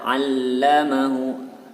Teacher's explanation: Huruf lamnya bertasjid, harus dibaca double.